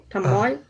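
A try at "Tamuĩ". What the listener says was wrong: Mas pode falar pelo nariz. Tamuim.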